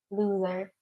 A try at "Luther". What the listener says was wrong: Oh, Luther. Luther. I think you said loser. No, Luther.